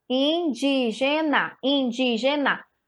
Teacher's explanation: é uma proparoxítona tá porque a sílaba tônica dela está na antepenúltima · A sílaba tônica do indígena é o di